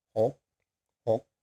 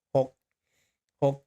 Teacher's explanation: it's a low tone. You drop your throat down, close it, it's a dead ending.